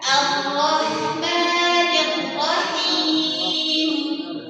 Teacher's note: di sini huruf rnya dalam harakat fathah maka dibuka tanpa dimonyokkan.